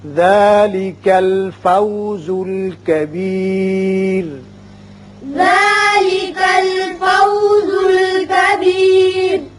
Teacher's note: را وقت کی صورت میں باریک ہوگا اس لیے کہ خود ساکن ہو جائے گا اور پیچھے زیر ہے